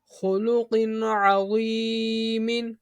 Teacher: عین حرف حلقی میں سے ہے۔ نون ساکن یا تنوین کے بعد حرف حلقی میں سے کوئی حرف آ جائے تو اظہار ہوگا، یعنی غنہ نہیں کریں گے